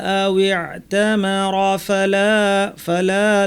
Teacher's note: ফামান হাজ্জাল বাইতা আও ইতামারা ফালা লাতে টানতে হবে, কারণ লামের পর আলিফ আছে, লাম আলিফ।